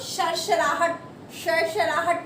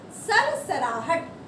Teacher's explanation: जब जीभा दांत को टच कर रही है तो दंते स, मतलब कि ये जीभ हमारी नीचे वाले दांतों के पीछे वाले पोर्शन को टच करेगी।